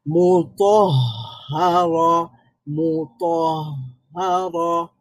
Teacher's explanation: রাখাওয়া, হায়ের আওয়াজটা জারি থাকবে।